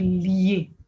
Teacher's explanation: C'est lorsque nous avons deux voyelles en réalité qui sont contiguës, mais qui font partie d'un seul bloc, okay, qu'on appelle diphtongue. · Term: synérèse